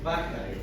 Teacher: Para pronunciar correctamente esa B dentilabial, estamos ubicando el borde de los incisivos superiores sobre el labio inferior. Por eso se llama B dentilabial.